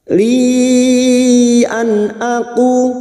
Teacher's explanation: Nun sukun atau tanwin yang bertemu dengan 6 huruf ini termasuk huruf hamzah. Nun sukun bertemu hamzah dibaca jelas tanpa mendengung idhar halki.